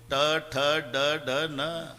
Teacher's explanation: वरच्या टाळूला जिभेचा स्पर्श आहे